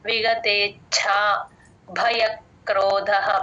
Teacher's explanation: భ కి మహాప్రాణం ఉంది